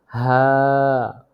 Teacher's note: কণ্ঠনালীর শুরু হইতে উচ্চারিত হয় হা কণ্ঠনালীর শুরু হইতে উচ্চারিত হয় হা কণ্ঠনালী শুরু হইতে উচ্চারিত